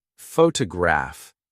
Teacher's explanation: photograph noun is stressed on the first syllable